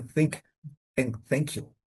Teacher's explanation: The sound is a consonant voice is fricative. Air passes between tongue and the teeth without vibration.